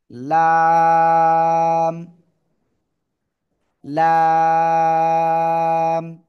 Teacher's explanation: জিহ্বার আগা, কিনারা, জিহ্বার আগার কিনারা উপরে মাড়ির দাঁতের গোড়ার সাথে লাগিয়ে লাম, লাম। জিহ্বার আগার কিনারা উপরে মাড়ির দাঁতের গোড়ার সাথে লাগিয়ে এই অক্ষরটা উচ্চারণ হবে এবং চার আলিফ টেনে পড়তে হবে।